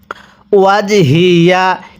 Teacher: জিমে যদি সাকিন হয় কলকলা করে পড়তে হয়, ধাক্কা দিয়ে পড়তে হবে